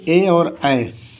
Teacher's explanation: ए दे तो कंठ तालु से ए और आय, ए और आय का उच्चारण स्थान कंठ तालु, कंठ प्लस तालु, अर्थात कंठ तालु से होता है। ए और आय का उच्चारण स्थान कंठ से भी होता है और ताल से, कंठ और ताल दोनों से होता है।